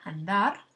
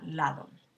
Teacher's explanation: andar y en la palabra lado nos interesa la articulación entonces la primera d sabemos que es oclusiva es más fuerte mientras que la segunda d que aparece entre vocales es fricativa